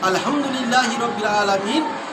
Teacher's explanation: হামজার হা, হালাকের বা কণ্ঠনালী শুরু হতে উচ্চারিত হয়।